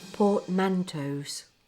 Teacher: Not portmanteaus or portmanteaus. The stress is a bit tricky with this one, but it's usually on the man.